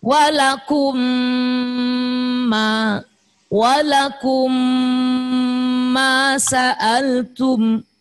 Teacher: mim mati ketemu mim mengucapkan m-nya 2 ketukan